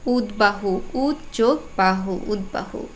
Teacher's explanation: উদ উপসর্গ যুক্ত হয়ে শব্দটি গঠিত হয়েছে এবং পরে ব আছে এই বটা অবিকৃতভাবে উচ্চারণ হবে অর্থাৎ ব এর মতোই উচ্চারণ হবে